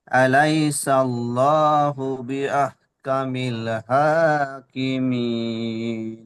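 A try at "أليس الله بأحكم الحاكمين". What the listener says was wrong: মাশাআল্লাহ, খুব সুন্দর। আবার বলেন।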